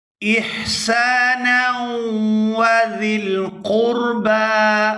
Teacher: وبالوالدین احسانا احسانا، یہاں نون کو واو مشدد کے ساتھ ملائیں گے تو غنہ کریں گے